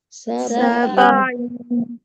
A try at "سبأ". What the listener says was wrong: عين يا همزة. سبأ